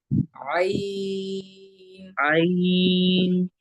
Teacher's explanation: आइन नाक से नहीं पढ़ना है